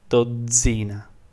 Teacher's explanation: More than the emphasis and the volume is actually the pitch that basically moves across the word. So instead of being at the very end, it basically moves onto the Z sound.